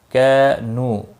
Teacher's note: الف مدہ اور واو مدہ دونوں کو ایک ایک الف کے برابر کھینچ کر پڑھیں گے